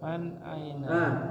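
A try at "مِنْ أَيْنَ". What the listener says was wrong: Bukan man sini. Min.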